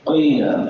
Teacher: قاف موٹے حروف میں سے ہے اور قیل لمبا ہو رہا ہے کیونکہ یا ساکن ما قبل کسرہ ہے، تو یہ یا مدہ ہے اور یا مدہ کو لمبا کرتے ہیں ایک الف کے برابر لمبا کرتے ہیں.